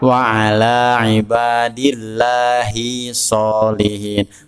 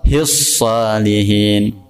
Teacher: Harus diidghamkan ke dalam huruf shad.